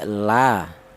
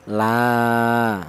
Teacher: Kalau satu harakat itu pendek la pendek. Kalau dua harakat lah itu ada mad thobiinya ya.